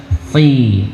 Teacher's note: Si dan si beda karena beda huruf. Shad tebal, shad isti'la ya. Kemudian bagaimana cara kita menebalkan huruf pangkal lidah, kita angkat ke atas.